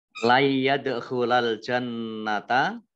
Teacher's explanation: Layyadkhulal jannata, nun sukun bertemu dengan huruf ya. Bacaan idgham, ya, bacaan idgham bi gunnah. Idgham bi gunnah. Idgham masuk, bi dengan gunnah mendengung.